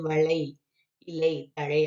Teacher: இதுல வந்து லை வரும்பொழுது இடையில வரும்பொழுது ஒரு மாத்திரை, அடுத்தது வளை, இலை, தழை அப்படின்னு வரும்பொழுது அந்த கடைசியில் இருக்கக்கூடிய ஐகாரத்துக்கும் ஒரு மாத்திரை தான் சொல்றாங்க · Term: ஐகார குறுக்கம்